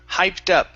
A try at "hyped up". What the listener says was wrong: Great. Great. Good job.